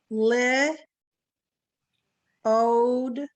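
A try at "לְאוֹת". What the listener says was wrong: That's a tav. Leot.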